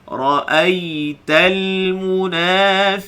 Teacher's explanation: bila sebut ya lin, kita kena turunkan suara ke bawah